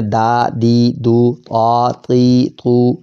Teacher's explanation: زبان کا جو ہے وہ نوک اوپر کے 2 دانتوں کے جڑ میں